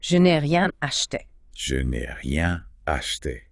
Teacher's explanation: the E in ne gets dropped before a vowel, so it becomes N.